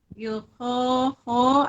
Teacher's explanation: Ho, ada mad asli alif dibaca panjang 2 harokat.